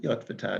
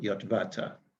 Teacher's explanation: Please pronounce it Yotvata, not Yotvata. It's the stress is on the first syllable in this case